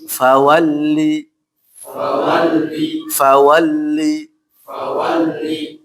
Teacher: fawalli dibaca tipis lamnya